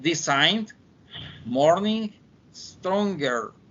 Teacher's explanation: the N and G is a nasal, velar, and voice sound. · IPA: /ŋ/